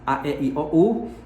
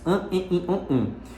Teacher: a gente tem os sons vocálicos que são orais, a, e, i, o, u, e os sons vocálicos nasalizados, an, in, on